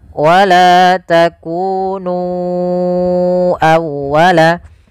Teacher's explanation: Kemudian pada lafal nu awwalaka, ya, di sini sama hukumnya dengan lafal bima anzaltu, yaitu adanya mad jaiz munfasil. Maka kita harus memanjangkan nu-nya sepanjang 4 atau 5 harakat.